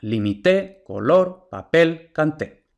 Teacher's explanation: Todas esas palabras, algunas vemos que llevan tilde, otras no, pero el acento prosódico siempre está en la última sílaba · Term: palabras agudas